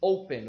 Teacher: Open, o verbo abrir, tem 2 sílabas, mas a sílaba mais forte, a tônica, é a primeira. Open, não é a final. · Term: sílaba tônica